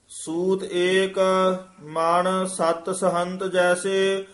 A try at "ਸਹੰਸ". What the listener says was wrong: ਸਹੰਤ ਨਿਕਲ ਗਿਆ ਹੁਣ। ਸਹੰਸ ਜੈਸੇ।